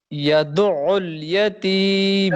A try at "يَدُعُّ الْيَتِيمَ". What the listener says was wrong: جلدی نہیں، جلدی کر رہے ہو. عین کو تھوڑی دیر تک رکھو حلق کے اندر. یدعل، یدعل.